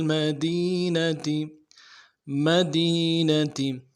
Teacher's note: لفظ مدینہ میں دی میں یا مدہ ہے، کھینچے گے ایک الف دار میں، تا کو واضح کریں گے۔